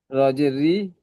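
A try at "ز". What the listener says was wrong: র নাই, যা ভাই, ওটা দেখেন এক নোক্তা রয়েছে, যার মাথায় এক নোক্তা, র খালি। রজি কেন হবে? রজি কেন হবে? আপনি জিম পড়ছেন তো, তার রজি হবে কেন? তাহলে এই যাটা আপনি মাথায় রাখেন যে আমি যা পড়ছি, আমি রা পড়িনি, যা পড়ছি, তারপরে পড়েন।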